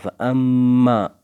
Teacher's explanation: گنہ ہوگا، سَعْيَكُمْ لَشَتَّى، تا میں سختی، فَأَمَّا مَنْ أَعْطَى، فَأَمَّا، اما میں میم مشدد پر گنہ ہوگا